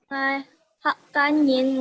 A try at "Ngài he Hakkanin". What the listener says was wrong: Ngày he Hakkanin. He-nya jangan lupa ya. Ngày he Hakkanin.